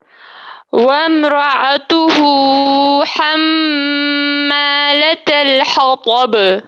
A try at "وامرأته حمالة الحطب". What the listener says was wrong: وامرأته ہا کو زیادہ لمبا نہیں کریں گے. وامرأته حمالة الحطب.